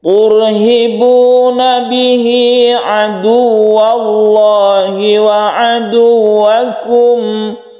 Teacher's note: Maka hak dhamir ini disebut mad silah qasirah yang panjangnya satu alif. Turhibuna, tur sukun ro, sebelumnya ada dhamma, maka dibaca tebal atau tafkhim, jadi membacanya tebal.